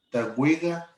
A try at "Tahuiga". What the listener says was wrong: Casi sonaba como W, acordémonos que la KW suena como Q. Muy bien, cuidado con eso, porque si no significa llevar. Es otra cosa que no queremos decir.